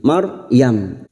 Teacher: ra sukun yang sebelumnya fathah, ra sukun kita baca tafkhim